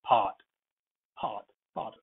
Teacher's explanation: Part has P aspirated to a slight degree, not 100%. Not part, part, part, lightly aspirated.